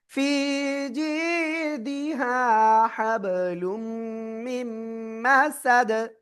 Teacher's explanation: মিম গুন্নার সাথে মিলিয়ে পড়তে হবে আর সেখানে শেষে কি হচ্ছে দাল সাকিন হয়ে যাচ্ছে থেমে গেলে কলকলা হয়ে যাবে · তানবিনের পরে ইদগামে বাগুন্নার অক্ষর মিম গুন্নার সাথে মিলিয়ে পড়বেন